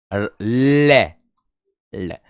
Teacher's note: जीभ श्वास वायु के मार्ग में खड़ी हो जाती है और श्वास वायु उसके बगल से प्रवाह हो जाती है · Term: पार्श्विक व्यंजन